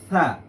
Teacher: জিহ্বার যে আগা আছে আগাটা সামনের দাঁতের আগার সাথে লাগবে